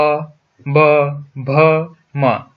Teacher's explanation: जब हम p, b, bh, m जैसी ध्वनियों का उच्चारण करते हैं, तो हमारे होंठ एक दूसरे को छूते हैं। इसीलिए इसे द्विओष्ठीय ध्वनि भी कहा जाता है।